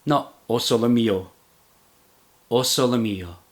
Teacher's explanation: the striking phonetical difference with neapolitan is the weakening of the unstressed vowels into what linguists call schwa